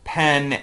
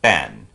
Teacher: we have a contrast between long lag sounds and sounds that have a zero or short lag